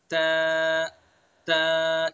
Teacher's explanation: जबान की नोक और सना उलिया की जड़, जबान की नोक को सना उलिया की जड़ पर लगाएंगे और अदा करेंगे त, त।